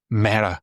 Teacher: sometimes the e is left out at the beginning and it's only said mea